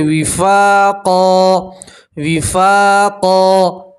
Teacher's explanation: جزاء وفاقا، وفاقا، فا کے ساتھ الف مدہ ہے اس لیے آپ ایک الف کے برابر کھینچیں گے اور 2 زبر کی تنوین کے اوپر آپ وقف کریں گے تو 2 زبر کی تنوین کو ایک زبر اور الف سے پڑھیں گے